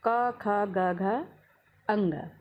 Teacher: साथ ही इसमें अ और ह भी आता है। बोल करके आप देखेंगे ये वर्ण गले से उच्चरित होते हैं। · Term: कंठस्थ